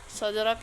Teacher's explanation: qalqalah sugro karena huruf dal sukun berada di tengah kata. Cara membacanya dipantulkan dengan ringan.